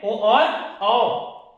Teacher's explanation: कंठ और ओष्ठ ये दोनों से उच्चारित होता है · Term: कंठोस्य